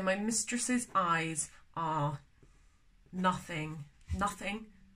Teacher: the second and third syllable of mistresses is not emphasized